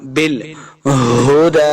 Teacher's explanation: ہا کو حلقے نچلے والے حصے سے ادا کرنا ہے